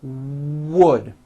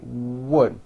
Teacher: do not forget to bring your lips forward on the word wood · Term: w sounds